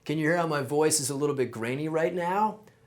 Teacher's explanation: vocal fry which is the sound your voice makes when you kind of let it sit in your throat